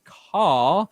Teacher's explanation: in british english car they drop the r because it's much easier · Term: non-roti, non-rhotic